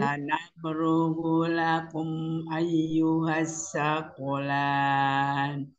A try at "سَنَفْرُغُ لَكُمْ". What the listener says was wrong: Gu-gunya disempurnakan. Sanaf gulakum.